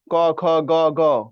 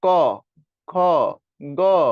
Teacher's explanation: তো তুমি যখন কণ্ঠধ্বনি উচ্চারণ করো ক, খ, গ, ঘ, দেখো ক, খ, গ, তাহলে তোমার বাতাস আইসা কোমল তালুতে চাপ দিচ্ছে, মানে জিহ্বার মূলে চাপ দিচ্ছে বা কণ্ঠ মূলে চাপ দিচ্ছে, অর্থাৎ পেছনে ঘটতেছে, যা ঘটতেছে সামনে না।